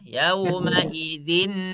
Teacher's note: Idgham bi ghunah ya, harus ada dengungnya. Apalagi nun, nah lebih dengung ya.